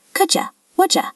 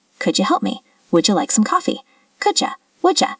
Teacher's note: We also see this with could you and would you. The D and the Y combine to make a ch sound. Could ya? Would ya?